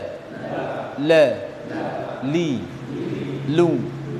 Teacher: ujung lidah sama tepi-tepinya ini ya ditemukan dengan gusi bagian atas tengah ya